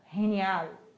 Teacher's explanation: o GE, lembrando que tem o som do R lá no fundinho da garganta